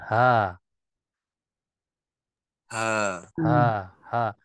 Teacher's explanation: huruf Ha ini jadi huruf yang ketika kita melafazkan suaranya mengarah ke arah dada